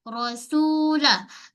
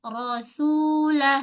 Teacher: Sin tu jangan tertebal, sin nipis. Rasulah, sin nipis 2 harakat.